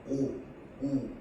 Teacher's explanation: 5 우 이런 식으로 주변에 힘을 줘야 돼요. 그래서 원수 모음은 입술 주변에 힘을 줘서 입술을 동그랗게 만들어서내는 소리